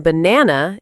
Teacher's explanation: the stress in banana is on the second syllable